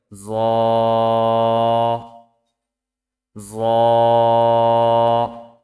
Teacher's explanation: জিহ্বার আগা সামনের উপরের দুই দাঁতের আগার সঙ্গে লাগিয়ে উচ্চারিত হয়